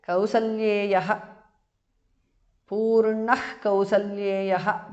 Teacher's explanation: Visarga changes to jihva muliya.